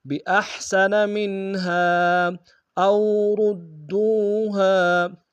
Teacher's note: او میں حمزہ کو واو کے سامنے آئیں گے، واو لین بغیر کھینچے پڑیں گے۔ را کو دال کے سامنے آئیں گے، شد زور دیں گے، دال کو واو کے سامنے آئیں گے، واو مدہ ایک انداز میں کھینچیں گے، ہاں کے الف مدہ ایک انداز میں کھینچیں گے۔